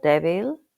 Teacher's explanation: At the beginning of a word it's similar to the D in English but move your tongue behind your top teeth to soften it